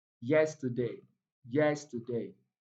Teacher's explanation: T and day contains weak vowel sounds, so they are not stressed. The two syllables, the last two syllables are not stressed, so the stress falls on yes, yesterday.